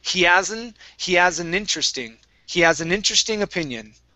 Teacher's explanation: So I'm going to drop this H in has.